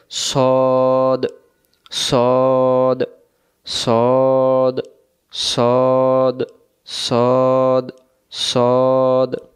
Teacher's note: সদ অক্ষরটা মোটা হয়, মোটা একটু বোঝাই দিই, গুরুত্ব সহকারে বুঝবেন। সদ অক্ষর সামনের নিচের দাঁতের আগা থেকে শীষ সহ মোটা করে পড়তে হয়, অর্থাৎ জবরে আকার পড়া যাবে না।